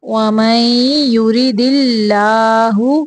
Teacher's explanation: اللہ کا لام باریک پڑھنا ہے